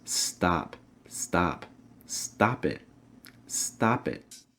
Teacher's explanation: making sure to pronounce stop with an ah sound. Ah, so really open your mouth wide.